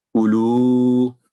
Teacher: دمہ کی آواز بالکل ایک سیکنڈ سے تھوڑی سی بھی لمبی نہیں کرنی، تو غلط ہو جائے گا۔